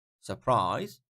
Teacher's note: second syllable is higher